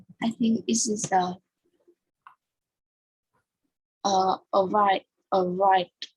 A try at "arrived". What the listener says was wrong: So you mean arrive it? It is pronounced arrived. So the ending sound is the, not it. So in past simple, we have three kinds of pronunciation, which is t, the, and it.